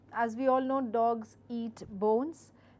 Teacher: I'm actually going down in my tone when I'm giving out this particular sentence. Again, in English language, I have to keep in mind statement follows a different intonation pattern and question follows different intonation pattern.